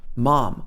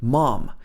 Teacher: So here we have the ah sound again, mom. This is the American English pronunciation.